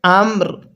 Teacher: ওয়াকফু করলে আমর রটা হালকা উচ্চারণ করব